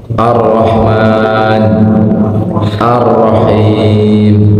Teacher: Takrir itu ada getaran ujung lidah saja.